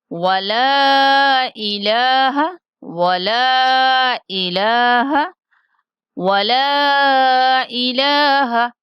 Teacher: حمزہ کو اپنے مخرج سے نکالیں گے، انتہائی حلق سے